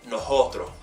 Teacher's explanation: breathing the S out so for example Nosotros will become no hotro